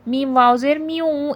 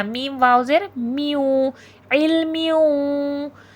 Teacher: علم، میم واو زیر میوں، ادغام مع الغنہ ہو رہا ہے، تنوین کے بعد حرف یرملون میں سے حرف واو آ گیا ہے تو ادغام ہوگا ، یعنی کہ مدغم کر دینا، ایک آواز کو دوسری آواز